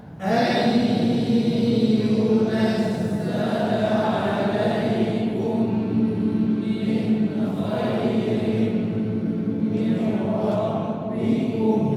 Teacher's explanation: Kemudian ayyunazzala, ini harus ada masuk hidung, jangan dibaca enggak, tapi bukan di a-nya yang dengung, tapi ketika nun dengan ya, nun dimasukkan ke dalam ya itu dengung